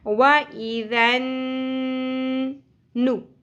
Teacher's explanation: नून के ऊपर तशदीद है जिसको हम गुन्ना के साथ पढ़ेंगे. वइज़न नु पेश ज़्यादा नहीं खींचनी.